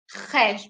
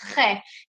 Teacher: H, böyle genizden gelen bir H harfi gibi düşünebilirsiniz.